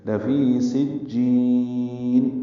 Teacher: جی یا مدہ ہے، نون ساکن کی وجہ سے مد عارض سکون بنی